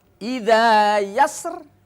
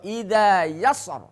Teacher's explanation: maka boleh dibaca dua cara, dengan tebal ro atau tipis ro, tafkhim atau tarqiq.